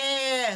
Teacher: तो आपको लगता है जीभ तो जहां है वहां की वही है, बीच में ही है। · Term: मध्य स्वर